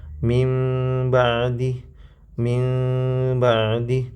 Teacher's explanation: Nah, sedangkan cara yang kedua, cara furjah dia tidak menutup rapat, tetapi masih ada celah setipis satu lembar atau dua lembar kertas